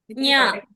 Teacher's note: ఇజ్ వినిపిస్తుంది య అనునాసిక య వినిపిస్తుంది అప్పుడు అది జ్ఞ అయింది